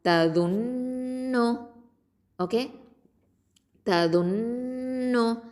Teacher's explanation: நூனில் என்ன இருக்குது? ஷத்தா இருக்குது. அப்போது இங்கே வந்து அக்கமல் குன்னா கொடுக்கணும்